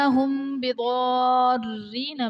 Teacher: میم ساکن کے بعد حرف با آ رہا ہے تو یہاں پر اخفاء شفوی کا قاعدہ ہوگا، یعنی میم ساکن میں ہم غنہ کر کے پڑھیں گے۔ بِضَارِّينَ میں ضاد حرف مستعلیہ ہے، پر پڑھا جائے گا، الف سے پہلے ضاد پر زبر، الف مدہ کا قاعدہ اور حرف مدہ کے بعد سکون اصلی یعنی تشدید آ رہی ہے تو یہاں پر مد لازم کا قاعدہ ہوگا۔